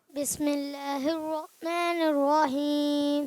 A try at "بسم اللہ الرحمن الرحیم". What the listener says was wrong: ہا تو نکالیں, ہا.